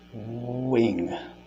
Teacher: It'll vary probably from person to person, but you're humming, basically. You're humming an oo-ish sounding hum while your lips are in the pursed position. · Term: W effect